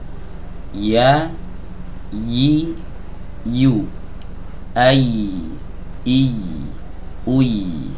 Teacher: ya keluar dari ee lidah bagian tengah bertemu dengan langit-langit yang ada di atasnya ya yang saya maksud bertemu ini bukan menempel ya yang saya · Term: huruf ya